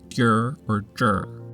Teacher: when erhuayin is produced the tongue should curl upward towards the back of the palate, the back of the tongue tip will gently touch the middle part of the palate.